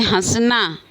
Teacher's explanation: यानी कि आधा चांद आधा चांद लगाते हैं तो उसे अनुनासिक इसका उच्चारण हम हवा नाक और मुंह दोनों से करते हैं